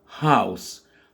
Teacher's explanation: une autre diphtongue ici, donc deux sons, le son A et le son OU, dans house. House qui veut dire maison.